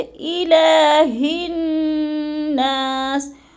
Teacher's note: ہا کو موٹا کر کے پڑھنا ہے، حلق کے آخری حصے سے نکالنا ہے